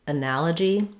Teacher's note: So in the word analogy, we have second syllable stress, and the letter A says the A vowel, just like in that or cat.